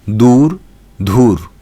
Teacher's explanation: অল্পপ্রাণ ধ্বনিকে মহাপ্রাণ উচ্চারণের প্রবণতা দেখা যায়